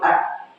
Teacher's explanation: ketika mengucapkan huruf hamzah tadi tidak ada apa aliran nafas